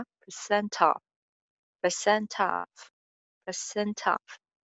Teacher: percent के ending sound छ off में link कर जाएगा